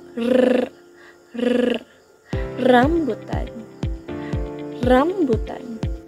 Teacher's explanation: Ang paraan ng artikulasyon sa letrang R ay pakatan o liquid tap at ang punto naman ng articulation, ito ay pungkilagid o alveolar at ito ay may tunog.